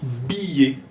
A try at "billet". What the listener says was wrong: No, tú sales el aire cuando haces